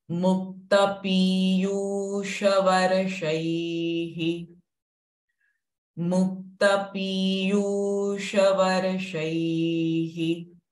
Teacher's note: And in Varsha, the sh sound is a retroflex sound.